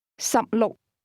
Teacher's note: 16 is pronounced with 2 low-level tones.